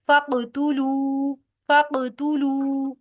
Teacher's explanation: इस पर वक्फ नहीं हो सकता, सिर्फ जज्म की वजह से इस पर कलकला हो रहा है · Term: कलकला सगीरा